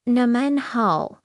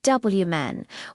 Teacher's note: the men part has a neutral, light tone